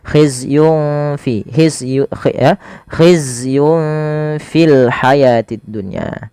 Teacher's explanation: Yang pertama khizyun fil haya, ini tanwin bertemu fa yaitu bacaan ikhfa, sama cara membacanya ketika ia bertemu seperti huruf kaf, maka samarkan langsung nunnya kepada huruf fa-nya